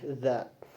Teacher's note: dalam tariqatul khurujil hawa dia termasuk ke dalam ihtikaki, adanya gesekan